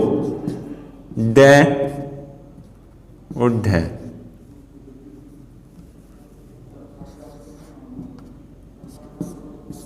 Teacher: इन व्यंजनों के उच्चारण में जीभ मूर्धा को स्पर्श करती हुई नीचे की ओर गिरती है। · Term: उत्क्षिप्त व्यंजन